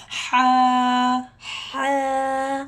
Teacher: حا کی آواز آپ نے حلق سے نکالنی ہے، گلے کی بیچ سے نکالنی ہے